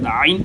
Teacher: आइन और हा इन दोनों को गले के दरमियान से अदा करते हैं।